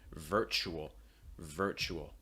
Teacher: sure it's really clear virtual virtual not the more ver er really strong r sound raising that back of your tongue curling up the front of your tongue but again placement low and relaxed er er virtual uh which